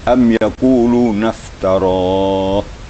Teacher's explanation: Itu itbaqnya agak besar ya, qaf di pangkal lidah. Jadi bacanya diangkat pangkal lidah, digetar pangkal lidah akan keluar suara qaf.